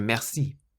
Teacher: because merci has two syllables, you stress the last one. You put the emphasis on the si on the end.